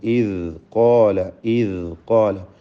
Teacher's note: ഇവിടെ ഖാഫിനും അലിഫിനും തഫ്ഖീം ഉണ്ടാവണം. തടിപ്പിച്ച് ഉച്ചരിക്കുക.